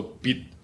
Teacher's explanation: you end in a position where you're ready to pronounce the consonant T but you do not pronounce it you do not let the air come out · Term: entering tone